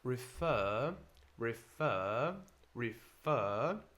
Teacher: in British English we don't pronounce this final R in American you would so you can practice and say